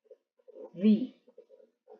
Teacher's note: se ponen un poco los dientes en contacto con los labios sobre todo los dientes superiores con los labios inferiores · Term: b corta